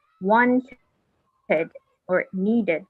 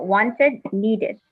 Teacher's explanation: if the word or the verb or the regular verb ends with a T or a D, it's pronounced like id, like wanted or needed. Because the infinitive form is want and need.